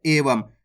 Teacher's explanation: Last के अंदर देखो अनुस्वार की मात्रा लगी हुई लास्ट वाला अक्षर के साथ, तो यहाँ पे अपन आधा माँ का उच्चारण कर रहे हैं एवं। जब भी लास्ट वाला अक्षर के साथ अनुस्वार की मात्रा होगी तो वहां पे आपको आधा माँ का उच्चारण करना है।